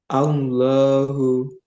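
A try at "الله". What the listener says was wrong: Nah, ini kurang tebal. Dan la, Allah, Allah. Mbak, gambarnya seperti O ya. Tapi bibirnya jangan mencucu. Tetap dibuka. Allah, Allah.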